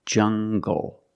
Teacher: jungle make the hard G sound jungle so you have the nasal sound and the hard G · using the nasal sound and the hard G together